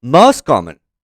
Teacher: This is an example of fast linking where the T sound is omitted from most, making it sound like most.